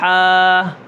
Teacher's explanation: ایک، اس کو ایک الف کے برابر کھینچنا ہے۔ دوسرا، اس کے اندر حمزہ آخر میں حمزہ نہ آئے، جیسے ہا، یہ ہا آ گیا، ہا، اب یہاں پر حمزہ بھی پیدا نہ ہو۔